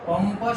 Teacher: प, फ, ब, भ, म. कुठल्याही अनुस्वारासमोर किंवा कुठल्याही व्यंजनासमोर जर प, फ, ब, भ, म यापैकी कुठलंही अक्षर येत असेल तर अनुस्वाराचा उच्चार हा सुद्धा म असाच होणार.